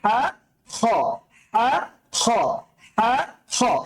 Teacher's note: just পার্থক্যটা হচ্ছে আটা উচ্চারণ হবে কণ্ঠনালীর মধ্যখান থেকে, আর খটা উচ্চারণ হবে কণ্ঠনালীর শেষ ভাগ থেকে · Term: কণ্ঠনালী থেকে উচ্চারিত